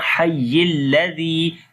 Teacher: zal we read softly, there is ya madda, we long also